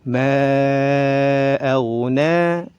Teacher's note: Boleh dibaca 2, 4 sampai 5 harakat. Ma aghna, na panjang 2 harakat, mad tabi'i